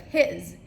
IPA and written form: hɪz (his)